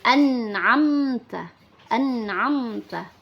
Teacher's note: mim sukun jika bertemu dengan ta maka hukum bacaannya adalah izhar syafawi dibaca tidak berdengung